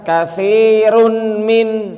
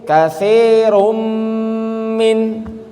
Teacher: ternyata dibacanya bukan katstirun Min enggak tapi kattirum min betul enggak bahkan nunnya berubah menjadi huruf mim